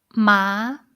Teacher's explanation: So, you see it's this one took a little bit longer, right? So, it's like a deeper tone and it's also rising again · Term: third tone